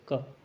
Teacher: तो क वर्ण का उच्चारण स्थान है अकुह विसर्जनीय नाम कंठ, इस प्रश्न का सही उत्तर होगा कंठ, कंठ से बोला जाता है क